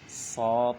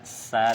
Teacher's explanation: So tebal, sa tipis. Mimnya juga berpengaruh.